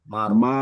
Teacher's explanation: rnya sebelumnya di ro sukun sebelumnya didahului oleh fathah itu masih dibaca tebal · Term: ro yang tebal